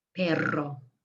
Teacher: if you have two r's and you want to roll it you put the tip of your tongue on the ridges behind your teeth and you blow over it so my tongue is vibrating i'm blowing over it i'm holding it loosely on the ridges